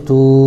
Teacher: واو ساکن سے پہلے تا کے اوپر پیش ہے اس لیے واو مدہ ہوگا، ان کو تھوڑا کھینچ کر پڑھیں، جیسے تا واو پیش تو۔